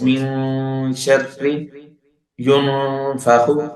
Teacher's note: there must be nasal involved and there would be ikhfa ma'al gunna. Ikhfa ma'al gunna.